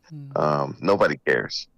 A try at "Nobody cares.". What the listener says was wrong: You need to give a really big emphasis on the nobody.